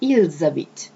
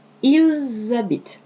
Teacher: when the S is followed either by a vowel or a mute H, you pronounce it like a Z